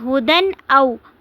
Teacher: هُدًى أَوْ میں تنوین کے بعد حمزہ آ رہا ہے تو اس میں ہم تنوین کو ظاہر کر کے پڑھیں گے اور اس طرح سے پڑھیں گے ہدن او، آواز کو ناک میں نہیں ٹھہرانا، ناک میں نہیں لے کر جانا، غنہ نہیں کرنا بلکہ ظاہر کر کے ان الفاظ کو ہم پڑھیں گے۔